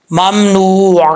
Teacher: عین کو پڑھتے ہوئے حمزے کا ساؤنڈ نہیں آنا چاہیے، عین کی آواز آنی چاہیے